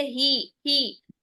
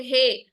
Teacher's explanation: हे नहीं करना है, ही को यानी हा की जो जेर है उसको ई की साउंड में रखना है, आपने ए की साउंड में नहीं लेके जाना। जहां आप ए की साउंड में लेके जाते हैं ना, वहां आपका मजहूल हो जाता है।